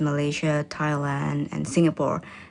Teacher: the countries are listed using a level tone that then falls for the last item in the list